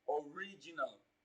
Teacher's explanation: the stress falls on the second syllable. It falls on the second syllable from the beginning of the word. Original. But if you are counting from the end of the word, it falls on the third syllable.